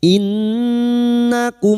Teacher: Nun yang bertasdid guna musyaddadah kita dengungkan selama 3 harokat